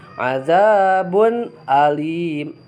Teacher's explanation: Jadi ketika tanwin atau nun mati bertemu dengan hamzah maka dibacanya harus jelas gitu ya. Jadi idhar itu jelas.